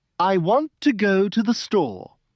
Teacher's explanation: The stressed words are want, go, and store. The unstressed words are I, to, the. They are soft and fast. So when a native speaker says it, it sounds like, I want to go to the store.